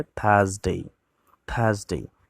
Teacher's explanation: এখানে আর এর উচ্চারণ নেই, সাইলেন্ট থাকবে।